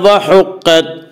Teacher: قاف کو پر پڑھیں گے۔ قاف حروف مستعلیہ میں سے ہے۔ حروف مستعلیہ 7 ہیں جن کا مجموعہ خصہ ضغط نقض ہے، جو ہمیشہ ہر حال میں پر پڑے جاتے ہیں۔